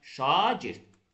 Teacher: Şagird sözündə A saiti uzadırıq. Şagirddə A uzanır. Mən əgər sözün tələffüzünə A-nın uzun tələffüzünü, yəni A-dan sonra qoşan nöqtə qoymasam, yəni uzun tələffüz eləməsəm, onda orfoepik cəhətdən, yəni tələffüz cəhətdən həmin sözün tələffüzü yanlış hesab olunacaq.